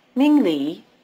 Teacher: notice that the tones are rising low